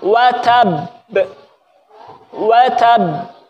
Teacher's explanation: Ba itu kan dari dua bibir ya. Jadi bibir kita ditempelkan dulu.